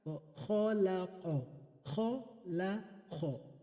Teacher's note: The kha is blue, the qaf is blue. Because both kha and qaf, they are hurufu isti'ila, and they must be read with tafkhim